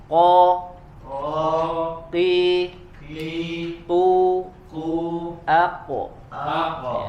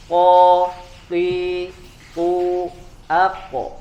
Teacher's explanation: huruf qaf ini dia memiliki sifat qalqalah atau harus dipantulkan ya. Dan juga ya tidak boleh pecah suaranya atau tidak boleh ada angin. Jangan ko ya.